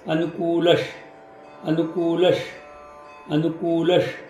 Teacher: दूचा उच्चार पटकन झाला पाहिजे, उचा उच्चार लांबला पाहिजे.